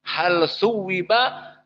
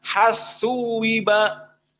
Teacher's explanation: usul dari usul qiraah al-Kisai idgham lam kepada sa